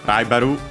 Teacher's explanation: its accent is just like in English, and it is on the ra.